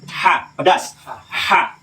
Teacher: Saya bilang pedas karena kayak orang kepedasan. Ada bermain sedikit di tenggorokan tapi nggak pakai riak.